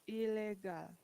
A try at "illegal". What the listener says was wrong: Illegal. Very good. 1 L.